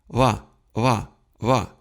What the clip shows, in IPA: ʋa ʋa ʋa